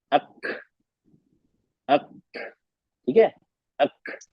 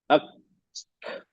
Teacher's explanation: आवाज गले से नहीं निकलती, सिर्फ जबान और तालू के दरमियान से साउंड निकलती है। जबान लगाइए, तालू लगाया, जबान वहां से, गले, गले पे जोर नहीं देना है हमें। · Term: काफ